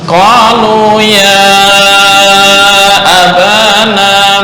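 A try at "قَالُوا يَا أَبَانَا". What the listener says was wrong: Panjang itu belum sampai 4 harokat, belum sampai 5 harokat.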